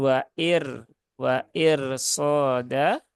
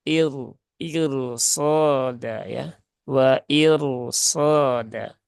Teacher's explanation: walaupun roknya sukun didahului harokat kasroh, tetapi karena setelahnya itu ada huruf sod atau huruf isti'la yang berharokat fathah, maka roknya tetap dibaca tafkhim ya, atau dibaca tebal.